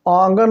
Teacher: मुख और नासिका दोनों से होता है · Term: अनुनासिक